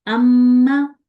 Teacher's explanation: تو غنہ کے لیے کیا ہم نے کیا تھا کہ ہم نے اپنے جو ناک کی یہ بانسا ہے یا ناک کی جو ہڈی ہے اس کو، اور ہونٹوں میں کچھ وائبریشن سی آتی ہے، گنگنی سی آواز آتی ہے، تو تب غنہ ادا ہوتا ہے